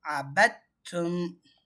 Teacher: இந்த தால் சாக்கினாவை இந்த தாவோட சேர்த்து தாவாவே மாற்றிடணும்.